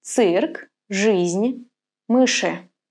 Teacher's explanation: You normally say it as E in the word see, but sometimes it sounds more like U after the consonants ц, ж, ш